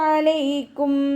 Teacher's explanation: സുക്കൂൻ ആകുന്ന സമയത്ത് കുറച്ച് എയർ പാസ് ചെയ്യുന്ന സൗണ്ട് കൊടുക്കുട്ടോ